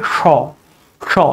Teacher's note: এবং একটি আছে মূর্ধন্য স, ওটা হচ্ছে স, স, অর্থাৎ সটাকে মূর্ধাতে জিভটা ঠেকাতে হয়, সেইভাবে উচ্চারণ করতে হয়